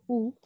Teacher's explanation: जीभ खूप उंच उचलली गेली तर मुखविवर आकुंचित होते. या स्थितीत जो स्वर उच्चारला जातो त्याला संवृत्त स्वर असे म्हणतात. उदाहरणार्थ उ.